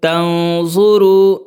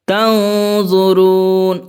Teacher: نون ساکن کے بعد زا ہے جو کہ حروف اخفا میں سے ہے، تو اخفا کریں گے